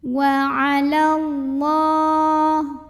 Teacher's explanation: la mad asli atau mad tabi'i karena ada baris fathah tegak di atas huruf lam, maka cara bacanya dipanjangkan 2 harokat